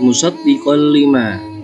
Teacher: Alasannya adalah karena ada fathah tanwin bertemu dengan huruf lam. Cara membacanya tanwin dimasukkan ke huruf lam dan dibaca tidak berdengung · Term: idgham bila guna